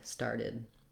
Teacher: first syllable stress, and then light and short on the id, started. When we get to starter, that's also a little bit harder for a lot of people to do this TER.